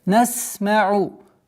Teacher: Звук свист у буквы син, четкое произношение.